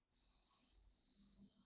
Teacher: Very high frequency sound, high hertz sound acoustically. And there's no vibration at your throat. So if you gently touch your throat while you're saying a very long S, say a long S like S.